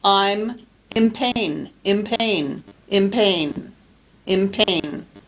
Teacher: I'm in pain, but I don't really pronounce it like that. What I really say is an M instead of an N, again, because of the P that's influencing the pronunciation of the nasal consonant. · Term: regressive assimilation